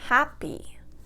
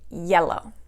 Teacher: 2 syllables, and it's an adjective, so the first syllable is going to take the stress